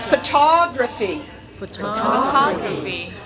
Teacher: Notice that in the stressed syllable, we have the full vowel, eh, o. In the unstressed syllable, we have the unstressed vowel, schwa.